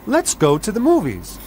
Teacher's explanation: the intonation falls on the verb go